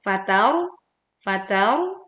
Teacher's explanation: ini 'ra' is sukun yang didahului huruf dengan fathah, sehingga dibaca kental,